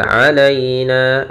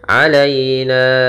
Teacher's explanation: ya sukun yang didahului dengan fathah, maka ini kita namakan dengan bacaan lin, bacaan yang lembut dalam pelafalannya